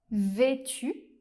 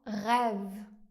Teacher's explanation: le /e/ fermé comme dans vêtu, ou bien /ɛ/ ouvert comme dans rêve